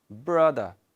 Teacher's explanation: At the end of this word we have R letter and the ra sound is not pronounced here.